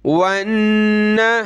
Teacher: नून पे तशदीद है, गुन्ना होगा, वाव को नून से प्लस करेंगे।